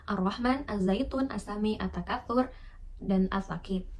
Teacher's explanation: Istilah idgham syamsiyah ini dipakai karena dalam bacaan alif lam syamsiyah ini bunyi huruf alif lam itu dilebur ke dalam huruf yang ada di depannya.